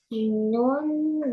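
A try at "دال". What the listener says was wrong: No, no. This is not noon. This is dal.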